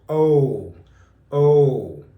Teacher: Long O starts almost like an ah, but it closes your mouth down and you restrict the airflow.